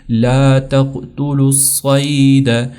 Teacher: یہ اصل میں تقتلوا تھا، یہاں پر واو کے اوپر جزم تھی، لیکن چونکہ یہاں پر یہ جو الصید ہے اس کا الف لام گر چکا ہے، اور صاد کے اوپر یہ شدہ ہے، لہٰذا ہم اس واو کو چھوڑ کر اس لام کو اس صاد کے ساتھ کنیکٹ کریں گے۔